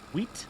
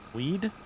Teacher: T is unvoiced, D is voiced. There may also be some difference in the length of the vowel